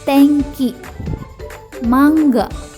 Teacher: bunyi n bertemu dengan bunyi k&g maka bunyi n berubah menjadi sengau kuat